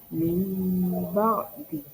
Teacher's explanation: Nun sukun dan tanwin di sini diubah membacanya jadi mim. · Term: iqlab